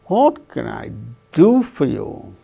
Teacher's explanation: Do gains that change in pitch, falling tone.